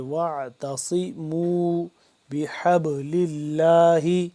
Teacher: واعتصموا واو عین زبر وا، تا زبر تا، صاد سی سی، تا کو باریک کر کے پڑھیں گے، صاد موٹا سین سے جدا کر کے ، واعتصموا بحبل اللہ، بحبل اللہ، ح با زبر حب، با